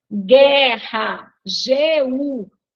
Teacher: Vejam que nós não escutamos o som do U, né? Então, aí a gente tem GU, que é um dígrafo.